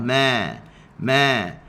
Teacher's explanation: Sebutan huruf mim kerana dia istifal infitah dan dia makhrajnya daripada bibir, kita tak guna pun lidah kita kat dalam tu.